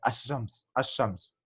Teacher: The letter Lam is not pronounced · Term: solar letter